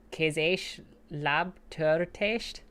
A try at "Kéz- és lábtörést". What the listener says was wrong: Yeah, did a T. Kéz és lábtörést.